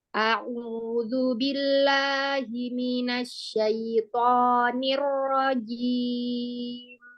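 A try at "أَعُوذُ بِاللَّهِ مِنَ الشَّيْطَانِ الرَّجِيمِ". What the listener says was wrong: Lagi huruf ainnya jelaskan lagi. Iya, huruf jangan ada jeda dari hamzah ke huruf ain. Dia makhrajnya sama dari al-halqu. Jadi nggak ada jeda ya. A'udzu a'udzu a'udzu.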